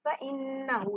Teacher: नून पे शद है, गुन्ना होगा, नाक में आवाज जाएगी